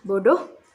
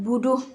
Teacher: Kemudian pengucapan bunyi o dibaca domah u, seperti kalimat bodoh, pengucapannya buduh, karena bunyi o tidak ditemukan dalam bahasa Arab, sehingga orang Arab mengucapkan domah u